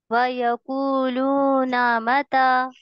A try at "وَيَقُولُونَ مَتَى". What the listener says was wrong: हाँ, खींचना है अभी भी।